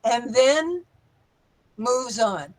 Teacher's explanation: Could make that little pause after and then a little longer.